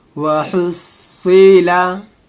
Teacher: स्वाद को पुर करके पढ़ा जाएगा, चाहे इसमें ज़ेर हो, ज़बर हो, पेश हो